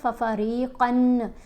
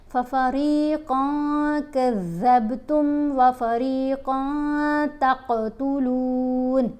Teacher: ہم نے نون کی آواز کو ناک میں چھپا کر پڑھنا ہے. اگر ہم پڑھتے ہیں ففریقن تو نون کی آواز آتی ہے، اس کو ہم نے نہیں واضح ہونے دینا. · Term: اخفاء